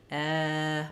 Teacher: it doesn't Glide it's one sound eh my tongue doesn't move as I'm saying it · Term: eh vowel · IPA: ɛ